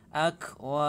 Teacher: Akwa, kafnya hamas ya, ada udara yang keluar.